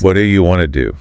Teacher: The hard T at the end of what and the D at the beginning of do basically smash together >> because the mouth is just moving too fast. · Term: connected speech